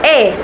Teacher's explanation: bunyi e dihasilkan dengan lidah Tengah dan rahang sedikit terbuka